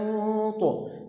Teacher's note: لاحظ كلمة لوط، الطاء عليها تنوين كسر، لما وقفنا عليها أصبحت ساكنة فقلقلناها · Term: قلقلة